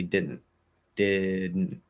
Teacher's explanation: we're not pushing out or flapping the d i'm going into that d position doing that sort of that nasal plosive um and the t is just completely gone um like we're